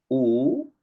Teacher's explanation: En cambio, cuando uno dice U, es ahí la lengua más bien se empieza a retraer y se va hacia la zona posterior, hacia la zona velar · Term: vocales posteriores